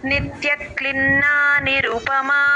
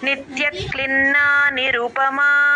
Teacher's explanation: నిత్యక్లిన్న అని కలిపి చెప్పాలండి నిత్యన్న అని తేలిగ్గా చెప్పకూడదు